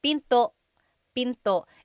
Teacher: And remember, don't forget the glottal stop. Don't forget to stop the sound at the end. That's called a glottal stop.